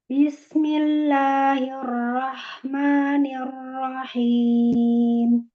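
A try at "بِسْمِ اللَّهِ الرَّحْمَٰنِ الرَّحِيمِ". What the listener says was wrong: Diluruskan semua kasrohnya. Diratain. Ya, sama kayak ar-rahim. Bismillahi. Ar-rahmani. Ar-rahim. Lurus semua.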